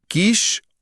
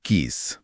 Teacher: श बोलते समय हवा तालू से रगड़ खाती है। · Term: शलजम वाले श